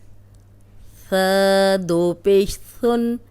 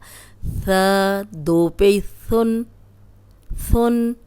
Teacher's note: یہ یاد ہوگا آپ کو کہ اوپر سامنے کے جو دو دانت ہیں ان کے کنارے پہ زبان رکھیں گے تو سیٹی کی آواز نہیں آئے گی، ثا نکلے گا، ورنہ یہ سین بن جائے گا۔